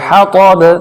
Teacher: با پہ قلقلہ ہوگا لیکن زیادہ شدت کے ساتھ نہیں